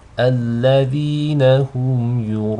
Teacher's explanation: Basically you have one of the letters of mud, an alif, followed by a hamza in the same word. You elongate it 4 or 5 counts. · These are both light. So you don't want the hamza to be read with tafkhim, nor do you want the ya to be read with tafkhim, just the ra. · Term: mud al-mutasil